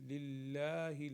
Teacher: لام کو باریک پڑھیں گے